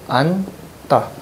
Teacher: 자음군 단순화가 돼요. 지읒이 탈락하고요.